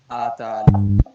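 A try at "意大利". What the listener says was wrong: आता नहीं पढ़ना, ई पढ़ना, ईताली, आताली नहीं, ईताली,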